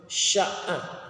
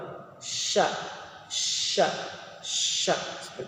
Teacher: bunyinya bersamaan dengan tersebarnya angin kuat yang keluar dari dalam mulut syaqqah ada angin yang keluar cak cak cak itu ke Hai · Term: tafasyi